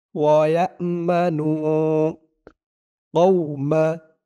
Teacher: নু একালিফ টান, পেশের পরে ওয়াও সাকিন